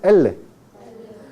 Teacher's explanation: la lengua se eleva hacia arriba Entonces es un sonido tenso con el ápice de la lengua elevado produciendo un sonido tenso